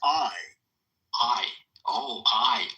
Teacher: That's actually two sounds. Ah and E put together real fast. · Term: diphthong